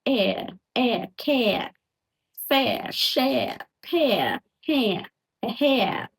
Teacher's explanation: start with E, like bed, best. Okay, glide quickly into the R sound. Okay, so the tongue goes impacts like R.